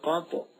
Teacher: جب ان پر جزم ہو تو ان کو پڑھتے وقت ان کے مخرج ٹکر کھا کر الگ ہو جاتے ہیں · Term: قلقلہ